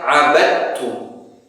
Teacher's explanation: Kita langsung idghamkan secara sempurna ke huruf ta.